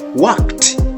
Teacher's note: So the ending sound is t, not ed